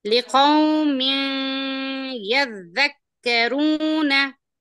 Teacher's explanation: नी बोल के यहाँ पर गुन्ना करना, इख्फा नहीं करना, आवाज छुपना नहीं, नाक में घूमना आवाज